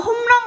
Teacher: 리을이 앞에 오는 미음에 영향을 받아 니은 비음으로 변했죠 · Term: 리을의 비음화